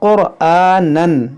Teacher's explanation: यहाँ रा मोटा होगा, काफ भी मोटा होगा हुरूफ मुश्तालिया होने की वजह से, और यहाँ तनवीन के बाद जो है हुरूफ इख्फा है, तो यहाँ पर इख्फा करेंगे। · रा साकिन से पहले पेश है, यहाँ रा मोटा होगा, काफ भी मोटा होगा हुरूफ मुश्तालिया होने की वजह से